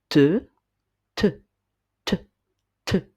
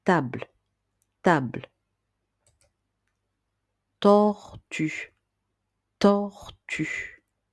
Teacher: Si vous mettez votre main au niveau de votre gorge, comme pour les lettres précédentes, et que vous prononcez le son te, te, te, te, vous allez remarquer qu'il n'y a pas de vibration, tout comme pour la lettre P qui fait le son pe